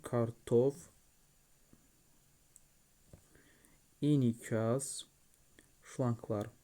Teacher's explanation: Kartof sözündə də vurğu son hecadadır.